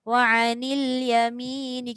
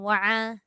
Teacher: Bila kita ingat huruf Ain keluar kat tengah halkum, automatik kita akan baca wa'anil yamini. Kita akan tekan dekat tengah halkum.